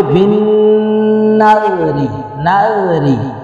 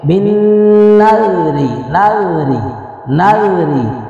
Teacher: یہ ادغام تو ہو رہا ہے لیکن بلا غنہ، غنہ ناک میں آواز نہیں جا رہی۔ تو یہاں پہ بن نذری، نذری لال کو نرمی کے ساتھ ادا کرنا ہے انشاءاللہ العزیز۔